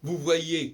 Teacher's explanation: dans vous voyez, on ne prononce pas le Z